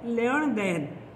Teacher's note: न के स्थान पर ण का प्रयोग हो जाता है